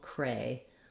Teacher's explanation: speech so the word crazy has two syllables cray and z the stress is on the first syllable